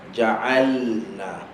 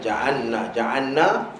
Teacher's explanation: lam dengan nun dia berkongsi makhraj. Okey, hujung lidah ke langit-langit atas